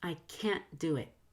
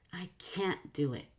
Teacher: NT before a consonant has a held T.